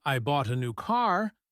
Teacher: I'm emphasizing car. It changes what the listener focuses on.